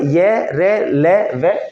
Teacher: य र ल व इनको बोलने में कम सांस खर्च होता है इसलिए अल्प्राण है